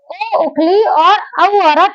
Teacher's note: कंठ ओष्ठ स्वर अर्थात कंठ और ओष्ठ के संयोग से जो स्वर बनते हैं उन्हें हम कंठोष्ठ स्वर कहते हैं। इसके अंतर्गत ओ उखली और औ अरत आते हैं।